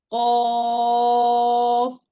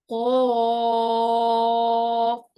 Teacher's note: Qaf should be pronounced from the soft part of your throat.